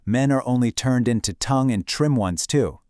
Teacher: Can you hear that sharp t t t sound? It almost sounds like she's spitting the words out. It's so sharp and mocking.